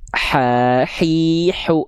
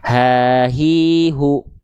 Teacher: kalau dia dilafalkan terlalu ke atas nanti jadi ha kecil dia. Nafasnya berbisik nanti. Ha, hi, hu, beda. Kalau ha besar di bawah, nafasnya karakternya biasa.